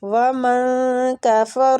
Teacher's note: نون ساکنہ کو ہم اخفا کے ساتھ پڑھیں، اخفاء حقیقی ہو رہا ہے، نون چھپائیں گے